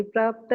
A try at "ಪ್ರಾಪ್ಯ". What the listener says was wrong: ಯೋಗಿ ಪ್ರಾಪ್ಯ. ಅದು ಪ್ರಾಪ್ತ ಅಲ್ಲ, ಪ್ರಾಪ್ಯ.